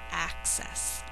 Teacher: And the emphasis is on the first syllable.